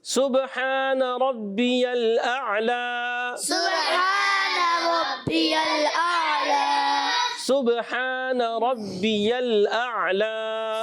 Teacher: سین کو باریک رکھنا ہے، با میں کلکلا ہوگا، ہا کی ادائیگی کلیئر، را پر زبر آنے کی وجہ سے را پر ہو جائے گا، اور یہاں لام کو ہلانا نہیں۔